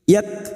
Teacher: Wa may yak, kaf sukun mempunyai sifat hamas, maka terdengar seperti yak